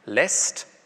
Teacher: Ä ist kurz und ungespannt. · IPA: [lɛst]